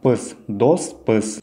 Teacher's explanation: Прибавляется окончание пыс, так как слово дос оканчивается на глухую согласную С, значит и нужно прибавить глухое окончание. Слово твердое, значит и окончание прибавляем твердое.